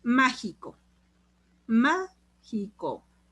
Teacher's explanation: mágico está en ma la sílaba tónica y es última penúltima ante penúltima sílaba por eso es una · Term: esdrújula